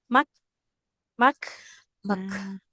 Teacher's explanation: ini mengalir nafas di huruf kafnya.